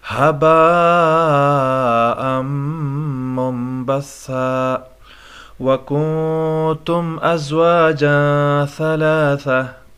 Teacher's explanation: کنتم اخفا ہوگا، نون ساکن ہے، اس کے بعد حروفی اخفا میں سے تا آیا ہوا ہے، جو حروفی اخفا 15 ہے ان میں سے تا ہے۔